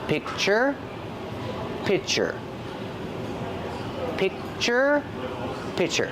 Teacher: I don't release the C Sound I just make the position and I stop the air